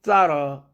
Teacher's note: thorough 할 때는 완전히 또 이건 더 슈아 사운드로 바뀌고 있어요